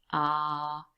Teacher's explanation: Now that sound is really produced right at the back of your mouth, ah, and your mouth is wide open and the tongue is really low. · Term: long ah